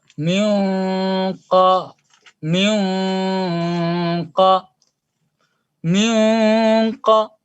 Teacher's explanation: Makanya nun sukun ketemu qaf, ini bunyi nun sukunnya ketika disembunyikan, itu sifat gunnahnya mufakham, ditebalkan.